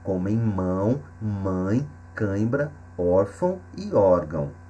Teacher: então ele indica que houve nas alização da vogal ou seja o som passa também pelo nariz · o som passa também pelo nariz, como em mão, mãe, cãibra, órfão e órgão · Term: som nasal